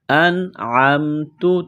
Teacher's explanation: نون ساکن کے بعد عین ہے، حروف حلقی ہے تو نون ساکن پر غنہ نہیں کریں گے